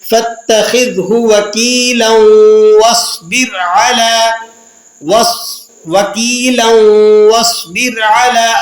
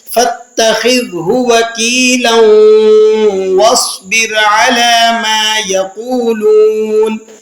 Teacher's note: وَاصْبِر کی واو کے اوپر تشدید موجود نہیں ہے لیکن ہم اسے مشدد پڑھ رہے ہیں، تشدید کے ساتھ ادا کر رہے ہیں